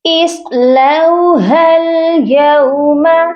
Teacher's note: صاد کو موٹا کر کے پڑھا جائے گا، لام کے ساتھ واو لین ہے۔